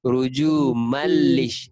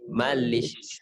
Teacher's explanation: Mal tu tanwin dia bertemu lam, idgham bila gunnah, memasukkan tapi tak dengung. Kan kita bacanya rujumallish, mal terus bunyi mal kan.